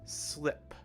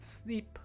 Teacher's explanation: it's important to note that the i sound is short right it's a short i sound it's not e